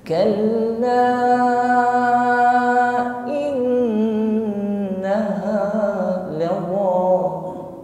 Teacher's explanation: ketika kita wasal ingin melanjutkan pada innaha, maka harus dibaca dua alif atau 4 harokat atau 2 kali ayun. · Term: mad jaiz munfasil